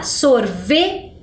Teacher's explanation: a parte que soa mais forte é o V com E